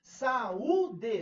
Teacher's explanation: O I está na segunda posição do hiato, está sozinho na sílaba tônica.